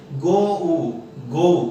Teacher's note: अब अगर हमें अमेरिकन स्टाइल में बोलना है तो हम लोग कहते हैं ओ ऊ, गो